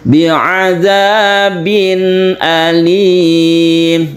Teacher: jelas terang dan tidak berdengung itu izhar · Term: izhar halqi, idhar halqi